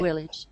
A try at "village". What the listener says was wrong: This word that you're using, which is spelled like this, whoops. In English, we pronounce the first letter as a V, village. Can you say village?